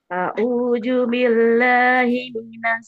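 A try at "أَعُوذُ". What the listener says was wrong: Jangan a'uju.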